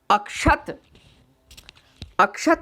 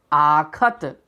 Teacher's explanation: ऐसे ही कुछ और उदाहरण हैं। अक्षत, अक्षत में अ है, यह बदल गया आ में, आखत। अपरिवर्तित हो गया आ, ह्रस्व से दीर्घ।